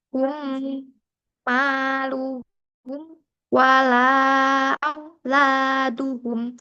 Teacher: Dibaca dengan merapatkan dua bibir atas dan bawah sebelah luar serta diikuti dengan suara berdengung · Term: idham mimi